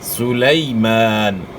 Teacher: یائلین کو اپنے معروف ادا کرنا ہے، مجہول نہیں پڑھنا. اور نرمی کے ساتھ ادا کرنا ہے، بغیر جھٹکے کے ادا کرنا ہے.